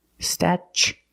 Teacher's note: Then we use the ch sound, statue. For the second syllable, we use the long oo like boot and moon, oo. Together, statue.